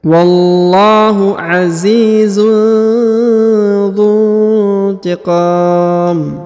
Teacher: huruf qa dipanjangkan boleh 2, boleh 4, boleh 6 ya. Karena di depan huruf qa terdapat alif dan huruf mim di ujung disukunkan atau dimatikan ya.